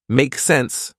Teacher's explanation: you can simply shorten that and say make sense with a rising intonation